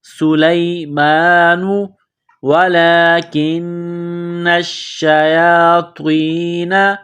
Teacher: سلیمان ولکن الشیاطین، لام کے اوپر کڑا زبر ہے، ایک الف کے لمٹ میں کھینچنا ہے، کاف کو نون کے ساتھ ملانا ہے، کاف کو باریک کرنا ہے، نون مشدد ہے، غنہ کریں گے، آواز ناک میں چھپائیں گے۔